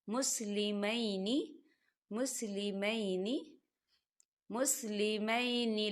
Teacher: ربنا وجعلنا مسلمین لک، مسلمین لک، یہاں دیکھیں مسلمین، اب یہاں پہ یا ساکن ہے اور یا ساکن سے پہلے زبر آ رہا ہے، تو یہاں پر یا مدہ نہیں ہو رہا ہے، یہاں پر یا لین ہو رہا ہے، یہاں پر آپ بالکل نہیں کھینچیں گے، آپ اسے جلدی سے پڑھیں گے